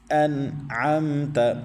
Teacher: میم ساکن کے بعد تا آ رہا ہے تو ادھر غنہ نہیں کرنا